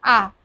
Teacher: বিবৃত মানে পুরোটা খুলে দিচ্ছি মুখটা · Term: বিবৃত স্বরধ্বনি